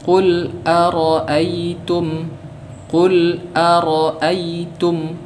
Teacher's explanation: di sini ada huruf lam yang sukun. Ya, vokal dari huruf lam ini mati. Qul. Ya, ara'aytum, begitu pula ya dan mim.